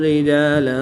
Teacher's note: دو زبر کی تنوین کے بعد را حروف یرملون میں سے ہے تو یہاں پر ادغام بلا غنہ ہوگا، غنہ نہیں کریں گے